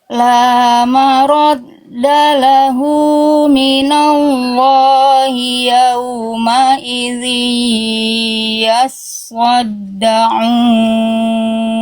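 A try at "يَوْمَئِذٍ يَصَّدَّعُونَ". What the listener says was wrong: Tebalkan sod, diangkat lagi pangkal lidahnya sodnya Bunda. Yaso. So. Yaso. Harus terasa diangkat pangkal lidahnya, ya. Yaumaidzi yassaddaun.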